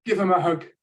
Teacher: the th of them has been cut and this is actually typical it's not a it's not lazy speech it's not slang it's